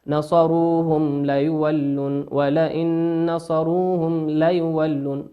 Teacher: والميم في كلمة نصروهم ميم ساكنة أتى بعدها حرف اللام، واللام من حروف الإظهار